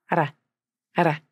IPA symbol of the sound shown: ɾ